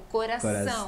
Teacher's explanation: O problema é que na hora que estão falando, não fazem a ênfase na sílaba forte, que seria no caso essa sílaba nasal, como coração. Tem que dar ênfase no ão.